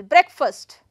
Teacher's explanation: I'm going to put the stress on first syllable right on the first syllable